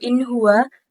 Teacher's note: dibacanya dengan jelas, pendek, tidak berdengung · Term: izhar halki